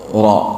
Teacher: Keluarnya dari ujung lidah dekat gusi. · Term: huruf ro